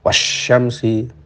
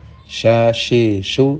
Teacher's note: Ya, tapi perlu sekali diingat bahwa angin itu keluar dengan kencang dari atas permukaan lidah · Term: shin